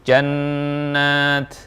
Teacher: Nun musyaddadah dengung dengan bunyi Nun murni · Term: Nun tasydid